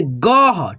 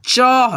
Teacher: विसर्ग जब लगेगा अक्षर पे तो उसको हम लोग ह के रूप में उच्चारण करते हैं